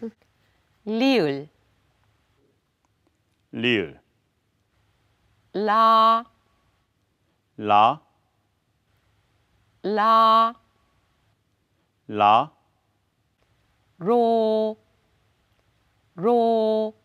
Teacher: in every language R is a difficult uh sound right so it can be a flipped R similar to Italian that tap but not rolled in Korean